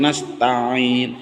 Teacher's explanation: nasta'in ta'in empuk karena ain termasuk sifatnya rikhwah